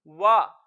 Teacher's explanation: मुंह और आवाज खोल के पढ़ेंगे वाव जबर वा, और इसको लंबा नहीं करेंगे।